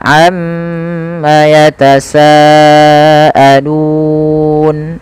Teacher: yang dua terlalu pendek yang enam terlalu panjang kita ambil yang empat saja yang tengah-tengah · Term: Mad Arid di Sukun